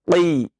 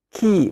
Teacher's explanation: Kemudian harus ketika mengucapkan huruf qaf dengan tebal, ya, karena dia memiliki sifat tebal, yakni isti'la, ya, dibaca dengan tebal. Qa, walaupun dia kasrah sekalipun, tetap dibaca dengan tebal.